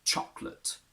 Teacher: You have to remove it completely. And the A becomes a simple schwa.